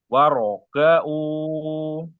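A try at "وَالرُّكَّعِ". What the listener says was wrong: waruka'u jangan dijedah roknya waruka'u ini dua harokat aja O-nya waruka'u seperti sebelumnya ya ada aliran sedikit waruka'u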